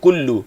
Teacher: ku muncung baris depan satu harakat, kemudian kita berpindah kepada lam. Lam ini bertasydid, maka tempoh pertama kita akan jumpa lam sukun dulu.